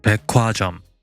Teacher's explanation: Also in the next Sino-Korean word 백화점, meaning department store, the 기역 in the coda and the hyut in the onset trigger aspiration and become merged as its aspirated pair